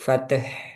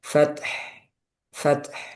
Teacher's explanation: Kemudian tan-nya jangan sampai mantul.